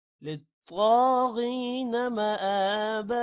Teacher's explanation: غین کے بعد یا ہے لمبا کریں گے. غین کو بھی موٹا کریں گے. مآبا حمزہ پر کھڑی زبر ہے لمبا کریں گے.